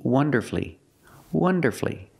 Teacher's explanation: So when you see F-U-L-L-Y, don't pronounce that U. Shorten the word and make it three syllables.